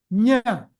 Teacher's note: Nya is nasal and combination of tongue touching the palate.